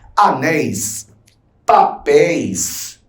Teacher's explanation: Se eu separo anéis, a sílaba tônica é a última, é o nés. É acentuada.